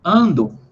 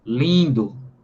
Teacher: O ar, ele passa tanto pela boca quanto pelo nariz. Sai dos pulmões, passa pela traqueia, passa pela boca e uma parte do ar passa pelo nariz. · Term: vogal nasalizada